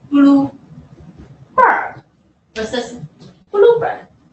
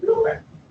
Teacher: the compound words have a specific pattern of stress. Primary stress in the first element, and a secondary stress in the second element.